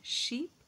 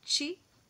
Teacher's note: the front of the tongue is raised in the direction of the hard palate. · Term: palato-alveolar sounds